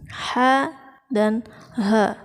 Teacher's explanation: Ha itu ada di tengah-tengah tenggorokan, sedangkan ha sama dengan hamzah yaitu di tenggorokan yang bagian dalam.